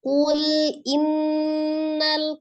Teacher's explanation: wajib ditekan ditahan 2-3 harokat dan suaranya dimasukkan ke al-khoisum atau rongga hidung